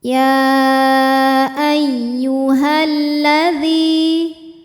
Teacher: Karena lam tasydid ini mengandung 2 lam, lam sukun dan lam fathah. Lam yang sukun gak dibaca, lam yang kedua yang dibaca atau kita baca masuk atau idgham. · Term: idgham syamsi